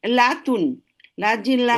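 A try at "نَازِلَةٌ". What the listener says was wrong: লাতুন কেন? নাজিলাতুন। লা টান হবে নাজিলাতুন, নাজিলাতুন।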